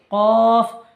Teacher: জিভের গোড়া উপরের তালুর সাথে লাগিয়ে উচ্চারিত হয়